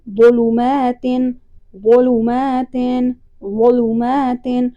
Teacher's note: اس کو موٹا کر کے اور زبان دانتوں کے ساتھ ٹکرائے گی